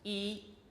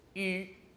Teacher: Are the lips unrounded, flat, E, or are they rounded, U?